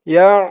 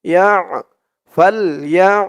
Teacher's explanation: আইনের উচ্চারণটা গলার ভিতর থেকে শক্ত হয়ে আসবে।